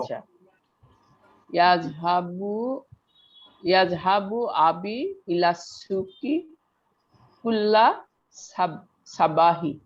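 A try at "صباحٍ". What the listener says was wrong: সাবাহিন। হিনই তো আছে দেওয়া।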